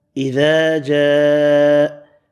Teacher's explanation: اس آیت میں الف مدہ 1 الف کی مقدار میں کھینچ کر پڑھیں گے